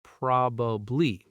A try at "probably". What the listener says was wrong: Yeah, that's what a lot of people say. The stress is in the wrong place. The correct pronunciation is probably. Stress on the first syllable. And in fast, casual speech, native speakers often compress it even more to just probably. 2 syllables.